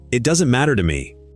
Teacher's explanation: Beats on matter and me. And there's a flap in the middle of matter